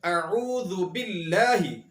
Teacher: لفظ اللہ کو باریک پڑھنے کی مثالیں یہ ہیں، ہم پڑھتے ہیں اعوذ باللہ، اعوذ باللہ کے اندر لفظ اللہ سے پہلے زیر ہے، اس لیے یہاں پر لفظ اللہ کو باریک پڑھا جائے گا